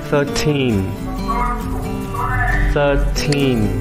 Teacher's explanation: Bạn cần đọc chữ teen rõ ràng và dài hơi một chút ạ.